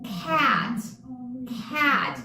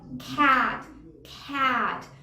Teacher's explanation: A is a front vowel sound. That means that your tongue needs to lean forward to produce it, okay? This for Spanish speakers, I frequently get the comment that it's like in between a and e in Spanish. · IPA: /æ/